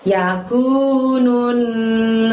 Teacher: pengucapan menurunnya kita masukkan ke huruf yang bertasydid di depannya yaitu Nun tasjid maka harus ditahan selama dua harokat